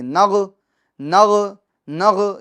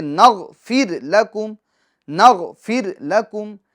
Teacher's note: یہ نغ جو غین ہے اس کے سکون میں آواز لوٹنی نہیں چاہیے، نغ، نغ، نغ، یہ آواز لوٹے گی نہیں، بلکہ نغفر لکم، نغفر لکم۔